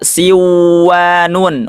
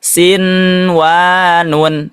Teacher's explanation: sinwanun tidak dibaca siwanun walaupun ada nun sukun bertemu dengan wawu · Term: izhar mutlak